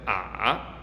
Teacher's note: Our third tone goes low and then, starts low, goes lower, and then can go back up. Oftentimes in regular speech, if people are not emphasizing things, however, it will just start low and then go a bit lower and kind of flatten out there.